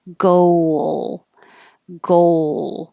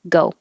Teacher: round your lips when you finish the o go go and then you have to unround your lips to make a good l